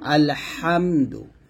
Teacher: আমরা গলার মাঝখান থেকে চাপ দিয়ে বলি